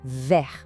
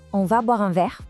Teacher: O grande desafio para nós brasileiros costuma ser o R de ver. É aquele som que vem lá da garganta